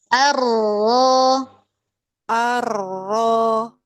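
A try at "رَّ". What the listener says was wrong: Nah, bagus. Bagus. Masyaallah.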